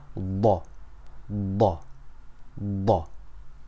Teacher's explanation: Dhaad's sound is made by keeping the tongue flat but pressing the sides of the tongue against the molars. They're the big teeth at the back of our mouths that we chew with.